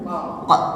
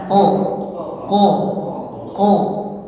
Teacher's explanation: Itu terlalu ke tenggorokan, jatuhnya huruf tenggorokan itu. Seharusnya huruf qaf itu bukan huruf tenggorokan, tetapi huruf lisan. Jadi pangkal lidah kita naikkan seperti kita mengucapkan Q.